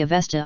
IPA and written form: əˈvɛstə (Avesta)